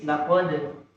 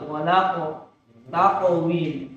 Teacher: Qalqalah yang pertama ringan, tipis, laqad. Qalqalah yang kedua tebal, walaqo, taqawim. Dan kedua-duanya itu tidak boleh memberi ruang tidak antara pantulan dengan huruf setelahnya.